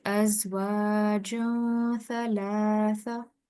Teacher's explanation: we're concealing the sound of noon or tanween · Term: ikhfa